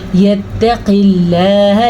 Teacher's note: اللہ میں ہم نے لام کے لفظ اللہ کو باریک پڑھا ہے کیونکہ اس سے پیچھے زیر ہے۔